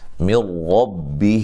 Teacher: نون ساکن کا ادغام بلا غنہ ہے